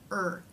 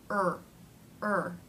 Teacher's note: to make this sound the tongue will pull back somewhat it will fatten and raise in the middle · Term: r consonant sound